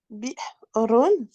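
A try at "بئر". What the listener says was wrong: En fait, moi, j'entends que tu sors un ha, alors que c'est vraiment e. Donc, bi'run. Bi'run.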